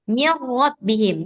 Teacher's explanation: Jadi melebur dia benar-benar nunnya itu memang sudah melebur ke huruf idgham. Jadi enggak kedengaran lagi suara nunnya gitu.